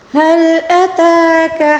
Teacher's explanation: تا کے اوپر کھڑا زبر ہے، اس کو ایک الف کے برابر کھینچ کر پڑھیں گے